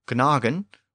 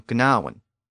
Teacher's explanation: Within Old English and early Middle English, the G sound near the end evolved into a W sound, and it became gnawen.